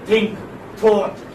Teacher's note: So here in dental you have teeth and tongue. The tip of the tongue touches the upper teeth.